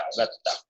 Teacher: دال اور تا کا مخرج ایک ہی ہے تو اس لیے پھر یہ دال کو نہیں پڑھا جاتا اور تا پہ تشدید لگا کے ڈائریکٹ اس کو پڑھا جاتا ہے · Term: ادغام